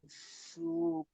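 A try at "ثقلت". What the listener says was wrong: সু নয়, সা সা সা যাবার সা।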